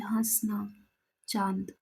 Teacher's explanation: ये चंद्र बिंदु जो हम लगाते हैं उसकी बात हो रही है। यह अनुनासिक स्वर का रूप है जिसका उच्चारण मुख व नाक दोनों से किया जाता है